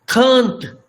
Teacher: It is nasalized using N because it is in the medial position.